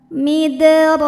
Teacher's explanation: dalnya dipantulkan dengan pantulan yang kecil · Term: qalqalah sughra